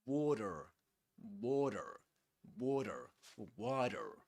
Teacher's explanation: A flap T. In water, we say this is a flap T, which means that it's pronounced just similar to a D sound.